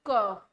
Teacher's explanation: क ना मेरी जो जीवा है वो तालू से ऊपर से टच हो रही है, ना दांतों से टच हो रही है, ये अंदर से गले से आवाज आ रही है, तो इसका आंसर जो हो जाएगा वो कंठ हो जाएगा